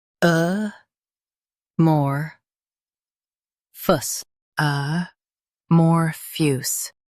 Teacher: Stress mor and keep phous soft. The A is light.